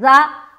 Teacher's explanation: देखिए जा जो हर्फ है ना ये सख्ती से अदा होता है जा, और इसमें सीटी की आवाज आती है